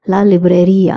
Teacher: there's an accent on the I so I'm going to stress on the I